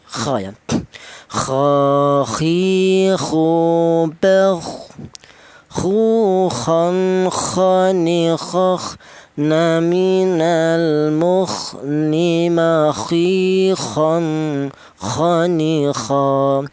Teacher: huruf kha ini keluarnya huruf berasal dari tenggorokan bagian atas